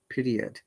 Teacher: 60 minutes so why we are pronouncing letter r here because this r is in between two vowel sounds which is e and i